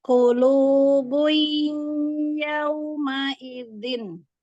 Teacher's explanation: waktu di awal sampai setengahnya belum masuk hidung. Nah, setelahnya lagi masuk hidung. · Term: durasi guna